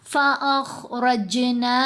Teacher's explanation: جیم کے اوپر ہم نے قلقلہ کیا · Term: قلقلہ صغرا